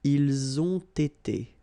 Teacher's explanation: You get first the liaison z and then you get the t.